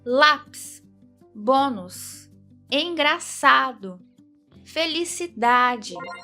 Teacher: Percebe que a sílaba tônica é sempre a penúltima? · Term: paroxítonas